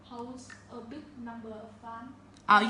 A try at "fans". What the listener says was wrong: You say fans, not fun. Yeah, fans.